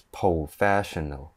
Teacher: Hong Kong people don't really pronounce the R word, so they will say it as professional, 0300, professional.